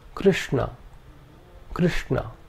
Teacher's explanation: The second is a cerebral sh